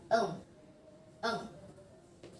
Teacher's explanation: the consonant that produced by soft palate and the back of tongue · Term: velar